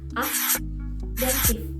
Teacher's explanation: Aktif terdapat dua fonem konsonan yang terletak berdampingan, yaitu k dan t, namun berada di dalam silabel yang berbeda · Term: deret fonem konsonan